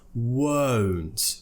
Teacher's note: tongue neutral in the middle of the mouth, and then I go to an oo where my tongue lifts up. O, smaller shaped mouth.